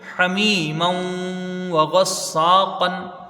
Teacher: یا ساکن ہے، اس سے پہلے زیر ہے یا مدہ ہے، کھینچ کے پڑھی جائے گی